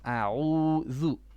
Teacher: Now your ayn, make it a bit more in your middle throat.